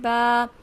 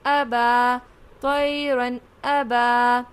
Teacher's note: ایک الف کی مقدار کھینچ کر پڑھیں گے کیونکہ الف مدہ ہے